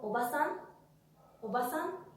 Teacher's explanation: no hay ningún tipo de alargamiento. Solamente hay una sílaba tónica en la última parte de la palabra